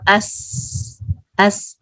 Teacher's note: ये सीन, सीन में light whistle अस, lips एकदम स्प्रेड, और अस अस, इसमें हम्स है, फ्लो है, इसके आगे जो सिफात हैं वो सारी रिफ्लेक्ट होंगी, अस सीन अस, ठीक है।